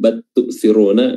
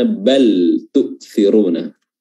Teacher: Di sini perhatikan bal sukun bertemu dengan huruf ta itu idhar ya, lamnya diidharkan. Adapun ketika dia idgham bat tu'thiruna itu bacaan yang keliru untuk riwayat ini karena dia berada di bacaan-bacaan riwayat yang lain.